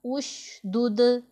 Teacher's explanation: دال ساکن ہے، حروف قلقلہ میں سے ہے اور حروف کے اینڈ میں ہے، اس میں خوب قلقلہ ظاہر ہوگا